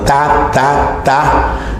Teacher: el ápice de la lengua se va a la parte superior de los dientes de ahí que se llame dental